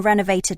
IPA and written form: ˈrɛnəʊveɪtɪd (to renovate)